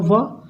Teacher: जो हमारा व क्या है? ओठ जो है दांत से लगते हैं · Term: दंतोष्ठ